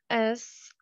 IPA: ʃ